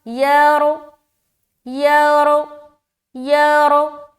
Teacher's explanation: زبر ہے نا تو را ہیوی ہوگا